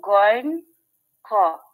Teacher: 3 নম্বর মাখরাজ, কণ্ঠনালী শেষ হইতে উচ্চারিত হয় হরফ গইন খ, মোটা করে